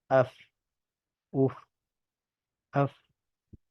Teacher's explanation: ان میں سے فا جو ہے وہ ادا ہوتا ہے اوپر والے دو دانتوں کا سرا جب نیچے والے ہونٹ کے اندرونی حصے سے ملتا ہے تو اس سے فا ادا ہوتا ہے